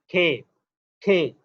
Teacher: آپ اہل زبان کی طرح کھے کہیں تو آپ کے منہ سے ہوا نکلے گی، کھے. یہ اسٹریس سیلیبل ہے.